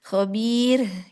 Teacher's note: Tidak menebal dan juga tidak terseret. Jadi tidak ada tamtit di situ ya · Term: ro yang tarkik